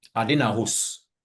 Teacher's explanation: In all the macro Creole varieties, you have monophthongs instead of diphthongs.